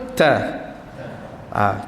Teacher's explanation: Baru dia akan jadi. Tekan dengan lidah di gusi. Kemudian kita keluarkan angin tu serentak dengan suara. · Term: tekanan